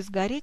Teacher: В слове «сгореть» происходит озвончение, но пишем «с»